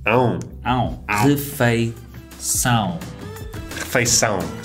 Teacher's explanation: there's that nasal sound again, huh? Yeah that -ão with a tilde.